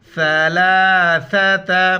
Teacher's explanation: لام کے اوپر کڑا زبر ہے، ایک الف نر کھینچنا ہے، ثا کے وقت زبان باہر نکالنا ہے